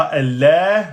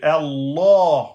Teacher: Et le ha de fin, Allah. Attention, on le prononce de façon grave, le lem.